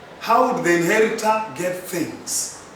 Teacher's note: I have used a falling intonation. Especially with the WH questions.